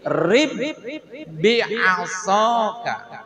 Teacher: setelah diidgamkan maka bunyi qolqolahnya sudah tidak nampak · Dikarenakan di sini bertemunya 2 huruf yang sama dalam makhraj dan sama dalam sifatnya, maka di sini bacaannya diidghamkan. Yang tadinya ada bunyi qalqalah setelah diidghamkan, maka bunyi qalqalahnya sudah tidak nampak. Masukkan ba pertama ini ke ba yang kedua.